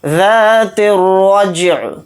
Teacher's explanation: ذات الرجع، را کو یہاں پر موٹا یعنی پر پڑھیں گے۔ جیم کے اوپر جزم ہے تو اس کے اندر قلقلہ کریں گے